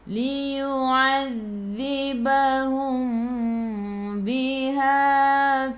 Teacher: Mim bertemu dengan ba, ikhfa syafawi, dengung 2 harakat. Nak rapatkan bibir boleh tapi jangan tekan. Kalau nak renggangkan bibir seolah-olah ada sehelai kertas di tengah.